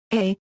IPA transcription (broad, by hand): ɑː